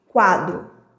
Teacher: Então eu começo com a semivogal no quadro e depois vem a vogal a. Por isso que a gente chama de crescente, porque o som ele vai crescendo. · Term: ditongo crescente